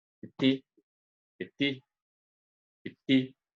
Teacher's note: Então, essa palavra seria um perfeito português, porque a sílaba tônica, a gente tem o I, e a sílaba átona, a gente tem o E, mais relaxado